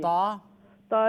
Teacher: تا جو ہے زبان کا کنارہ ثنایا اولیاء کی گم لائن سے لگنے سے ادا ہوتا ہے